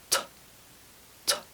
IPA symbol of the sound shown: t